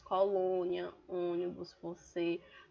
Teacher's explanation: palavras em que na sílaba tônica a vogal possui som fechado.